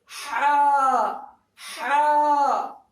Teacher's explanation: ہا، حلق سے، بیچ حلق سے آپ کو ہا نکالنا ہے،